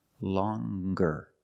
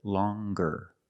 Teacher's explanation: With a nasal sound, plus the hard g. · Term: hard g sound